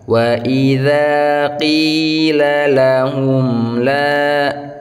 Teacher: maka dia disebut izhar syafawi. Bacanya jelas, tidak ada dengung ya.